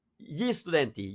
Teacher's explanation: I am making a pause between the article and the word just to help you hear it. But we never make a pause. It's never gli studenti, gli amici.